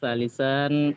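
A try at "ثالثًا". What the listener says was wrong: Sa-nya panjang, Pak. Salisan ya. Jangan salis.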